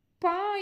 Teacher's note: பா என்னும் எழுத்து உதடுகள் இரண்டும் ஒட்டுவதால் பிறக்கின்றது